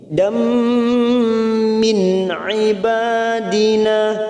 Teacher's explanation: fathatain pada huruf dal ini bertemu mim, namanya bacaan idgham di gunnah. Kita tekan selama 3 harokat.